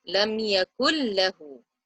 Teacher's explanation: The next example, lam yakul lahu. So we drop that noon after the kaf and join the kaf to the lam.